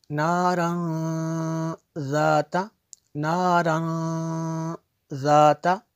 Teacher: یہاں پہ جو ہے تنوین کے بعد ذال ہے، تو یہاں پہ اخفا ہوگا